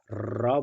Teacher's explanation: जीभ आपका कहाँ जाकर सट रहा है, मसूड़ा के पीछे वाला हिस्सा में, यानी तालु के आगे वाले हिस्से में सट रहा है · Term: मूर्धा